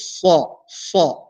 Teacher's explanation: we have to make sure that sad is being pronounced in a heavy manner. And our mouth should be full while pronouncing the letter sad. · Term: heavy letter